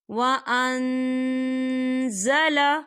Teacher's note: وَأَنزَلَ، یہاں دیکھیں وَأَن، یہاں نون ساکن ہے اور نون ساکن کے بعد زا آ رہا ہے، اور زا جو ہے اکفا کا ورڈ ہے، تو ہم یہاں اکفا کریں گے، نون ساکن کی آواز کو ناک میں چھپائیں گے۔